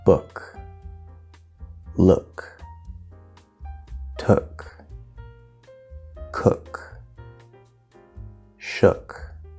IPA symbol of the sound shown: ʊ